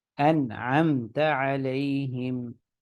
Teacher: نہ نون پہ غنہ ہوگا نہ میم پہ غنہ ہوگا